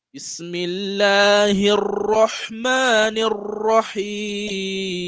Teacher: you make sure that you pronounce the tashdid, right? The doubling of the ra.